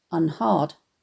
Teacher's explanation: unheard would have been pronounced unhard, to rhyme with regard at the time Thomas was writing. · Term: Great Vowel Shift